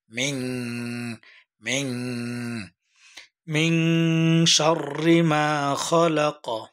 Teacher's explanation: মিন কেন গুণনা করলাম, নুন সাকিনের পরে শিন আসছে। আমরা বলছি নুন সাকিন এবং তানবিনের পরে যদি ইখফার হরফ শিন আসে তাহলে আমরা নাকের ভিতরে গোপন করে গুণনা করে পড়ব